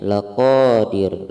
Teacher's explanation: karena di akhir ayat maka ro-nya ini disukunkan maka hukumnya tarkik, ro tipis.